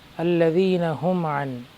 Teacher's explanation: یہاں پر میم ساکن کے بعد عین آیا ہے، اظہار کرتے ہوئے آگے بڑھیں گے، ہم عن نہیں کریں گے، الذین میں حرف مد ہوگا۔